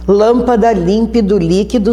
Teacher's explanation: Caiu a tonicidade na antepenúltima sílaba. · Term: proparoxítonas reais